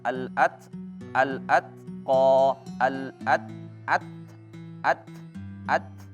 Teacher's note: dia ditahan dulu lalu dilepas e dilepaskan anginnya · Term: hames